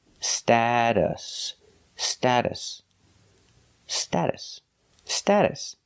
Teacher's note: the second syllable is pronounced with a relaxed uh uh like cup and up